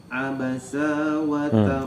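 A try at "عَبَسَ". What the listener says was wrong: Sanya pendek, Pak.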